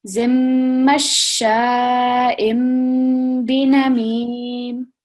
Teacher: we're going to pause for 2 seconds and it's going to be the meme sound coming, not the noon sound